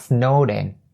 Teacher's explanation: The pronunciation for this phrase is pretty simple, and all you have to keep in mind is snowed ends with a D sound, and you link it to in, you have snowed in, be snowed in.